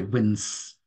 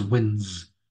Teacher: it doesn't sound like an S does it it sounds more like a z